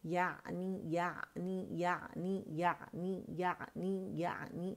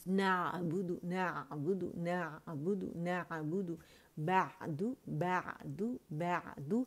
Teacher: وسط الحلق جو ہے آپ نے وہاں پہ جانا ہے, وسط پہ, ٹھیک ہے. ادن الحلق اور اقصى الحلق کے درمیان کا یہ حصہ ہے.